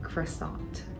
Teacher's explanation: in English, people will typically pronounce the T at the end, like croissant